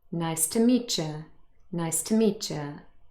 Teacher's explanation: It's also sometimes called a semivowel or a glide, but really it's officially a consonant, y. So when we have t followed by y, usually this changes to ch, ch.